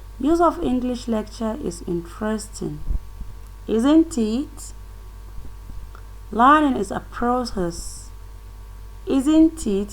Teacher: You can see that there is a falling and rising tone there.